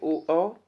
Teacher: दूसरा है कंठ ओष्ठ वर्ण यानी कि कंठ ओष्ठ कंठ से भी और ओठ से भी। दोनों से बोले जाते हैं।